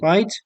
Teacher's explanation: If we pronounce right with a rising pitch or a rising intonation, we understand it as um, something like a question